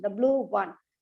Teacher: So only the and one are given in a falling tone, and blue is given in a rising tone. The blue one, the blue is given more stress. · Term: rising intonation